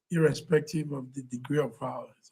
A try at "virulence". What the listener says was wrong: Virulence, not violence. Virulence.